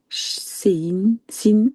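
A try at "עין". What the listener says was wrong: Non, non, non, non, non. C'est pas un sadé qui est là. Ça se ressemble, hein, mais c'est pas un sadé.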